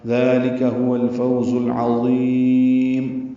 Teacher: مد عارض للسکون بنا کے میم پہ ہونٹ بند کر لیں گے